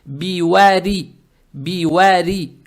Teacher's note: Далее стоит буква ра с касрой. Учитывая то, что у буквы ра огласовка касра, букву ра произносим мягко